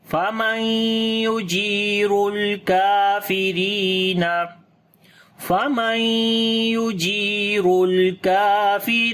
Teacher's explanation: Jim we long due to ya madda. Ra we read in heavy sound due to dhamma sign on it. On the lam we make tawassut quality. · Kaf we long due to standing fatha on it, and ra we read in light sound now because there is kasra under the ra, and we long due to ya madda.